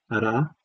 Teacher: the tongue moves towards the alveolar ridge, taps it, and comes back. Okay, comes back away. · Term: alveolar tap